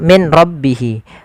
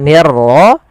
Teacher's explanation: suara nunnya dimasukkan ke ra dan diganti menjadi r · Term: idgham bila gunnah